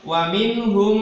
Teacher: jadi mim sukun langsung masuk ke huruf mimnya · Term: idgham mimi